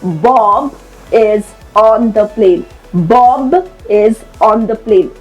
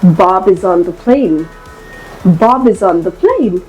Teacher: we actually merged the last sound of the first word with the first sound of the next